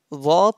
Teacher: Za pronounced from the tip of the tongue and inner edge of upper front teeth.